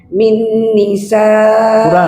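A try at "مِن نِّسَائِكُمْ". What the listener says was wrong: Kurang gunnahnya. Min tahan.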